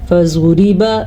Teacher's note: زواد کو پر پڑا، را کو باریک پڑا